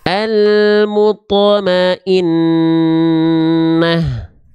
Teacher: Dirasakan dulu dengungnya 2 harokat. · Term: gunnah